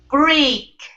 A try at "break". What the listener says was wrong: Go to the A first. Go to the A sound first. Okay, but you're still hitting the E sound before the A.